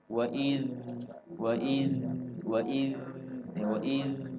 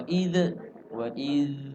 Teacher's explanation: ujung lidah ketemu ujung gigi seri depan atas, lalu keluar anginnya